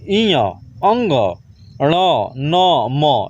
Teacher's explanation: इ अंग ण न म, ये सब नाक से बोला जाता है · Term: नासिक वर्ण